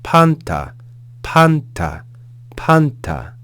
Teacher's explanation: them [Music] verse 3. we have the consonant P followed by an alpha with an acute accent so we're going to raise pitch on that syllable